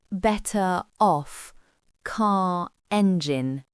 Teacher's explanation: le R d'habitude muet réapparaît pour créer la liaison